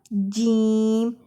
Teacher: زبان کا درمیان جب اوپر تالو کے ساتھ لگے تو جیم ادا ہوتا ہے